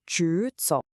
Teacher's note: 直 is a second tone, so it rises, 直, and we already know 走 is a third tone, which dips. When you put them together, there's this natural flow. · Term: tone combination